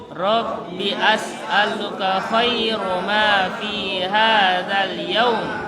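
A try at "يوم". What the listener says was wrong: Yaum itu vokalnya u bukan o. Jangan ki bilang yaum. Bukan yaum tapi u. Yaum. Rabbi as'aluka khaira ma fi hadzal yaum.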